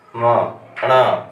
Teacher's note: ऐसे ही मान लीजिए हमारे जीभ का अग्रभाग अगर नाक को स्पर्श करता है, जैसे हम नाक से बोलते हैं ना, म, णा, तो ये नाक का सहयोग लेते हैं तो इनका उच्चारण स्थान नासिका हो जाता है